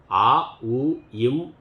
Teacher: வாயை திறந்தும் இதழை குவித்தும் உதட்டை மூடியும் ஆ உ இம் எழுத்துக்கள் பிறக்கச் செய்கின்றோம்